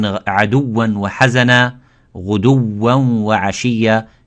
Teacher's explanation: So the first waw, it does not have ghunna, but the second one has the ghunna. So the first waw is just a normal from the lips.